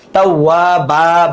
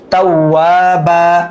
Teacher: উচ্চারণের সময় আমরা এক আলিফ টেনে পড়বো, মাদ্দে এওয়াজ, কারণ দুই জবরের পর ওয়াকফ হয়েছে